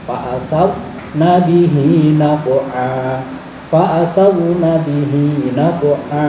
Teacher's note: ada rok sukun jatuh setelah fathah, itu harus dibaca tafkhim atau kandel, yang dalam prakteknya biasanya lidahnya diangkat ke atas